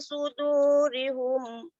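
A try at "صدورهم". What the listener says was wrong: Sudurihum tu macam ada baris bawah, ada baris depan. Suduruhum. Suduruhum.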